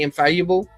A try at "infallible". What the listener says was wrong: You keep on saying infallible. You're doing this EU thing when it's just Upsilon or epsilon.